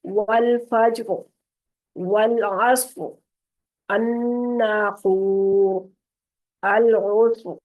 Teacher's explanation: हम साकिन करके पढ़ेंगे तो रा मोटी हो जाएगी